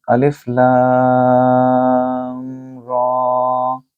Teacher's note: الف لام اور را، یہ دیکھیں یہ حروف مقطعات میں سے ہے، اس کو بولیں گے الف لام را۔ لام کو تقریباً 3 سے 4 الف کے مطابق لمبا کریں، اور را کو 1 الف کے مطابق۔